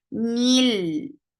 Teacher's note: For kasra give E sound. Don't drop this E sound even you're attaching with the coming up letter.